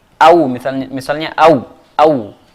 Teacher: Adapun waw pada huruf lin, makhrajnya adalah kedua bibir.